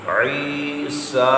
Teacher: عیسیٰ، عین یاد رعی، یہ ہے یا مدہ، اور سا کھڑی حرکت ہے، 2 حرکت کی مقدار لمبا کریں گے